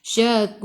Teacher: Matikan dengan huruf ra. Sebelum ra ada waw, kena baca dengan tebal. Tafkhim, lidah naik ke atas.